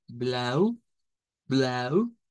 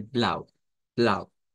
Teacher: estos dos la diferencia está en como la prolongación del dión el austríaco promedio nos lo va a decir como más largo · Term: pronunciación austriaca